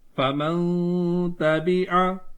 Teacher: ٹھیک ہے, اکفا گننا سے تھوڑا سا الگ ہوتا ہے کہ ہم نون کو مخفی کر دیتے ہیں, نون کو چھپا دیتے ہیں